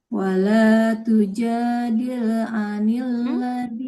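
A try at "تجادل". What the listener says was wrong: Lamnya jangan tujadil, jangan ada pantulan. Wala tujadil. Wala tujadil.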